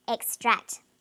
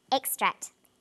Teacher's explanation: Where is the emphasis or stress in this word? It's on the second syllable